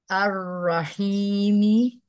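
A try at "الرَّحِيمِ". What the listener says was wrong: Ya, ro dibuka dulu ya. Ro-nya dibuka lebih lebar.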